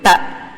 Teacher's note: మీరు ప్రొనౌన్స్ చేసి చూడండి. ట, ఆ నాలిక పైకి వెళ్ళి అంగిలి దగ్గర తగులుతుంది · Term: మూర్ధన్యాహ